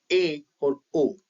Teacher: जब हम इनका उच्चारण करेंगे तो पाएंगे कि संवृत स्वर से अधिक हमारा मुख जो है खुला है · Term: अर्धसंवृत स्वर